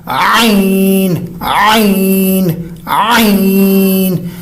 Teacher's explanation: گلے کا زور، درمیان والا حصہ